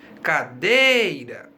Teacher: Agora você já sabe que a sílaba tônica da palavra cadeira é dei.